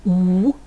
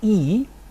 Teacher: With the third parameter, the parameter of lip rounding, you may have noted that some of the vowels I've just produced were produced with rounded lips like U, others were produced with spread lips like E